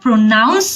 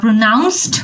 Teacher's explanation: যখন আমরা প্রোনাউন্স বলি বা প্রোনাউন্সড বলি তখন কিন্তু নাউন পার্টটাতে স্ট্রেস থাকে